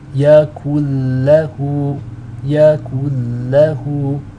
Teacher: You're dropping out the noon altogether and you're linking up the kaf into the lam with the shadda. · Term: idgham bila ghunna